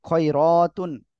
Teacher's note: র মোটা হবে এক আলিফ টান হবে আতুন তানভীন এর পরে ইজারের উপর হা স্পষ্ট আকারে পড়তে হবে